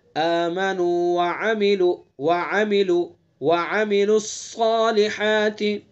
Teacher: صاد حروف مستعلیہ میں سے پر پڑھیں گے